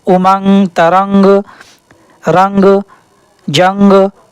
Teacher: नून की आवाज़ को छिपा दिया जाता है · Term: इक्फा